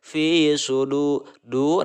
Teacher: mad asli atau mad tobi'i dibaca 2 harokat. Huruf mad tobi'inya adalah huruf wawu mati yang sebelumnya berharokat doma.